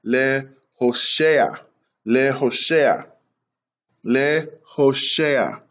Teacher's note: And then you have the seti underneath the shin makes an A sound. And then you have the ayin, which is silent, and it carries the sound of the patak underneath it.